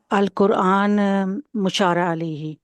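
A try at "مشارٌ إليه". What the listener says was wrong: مشارن الیہ، الیہ، ناٹ علیہ، الیہ،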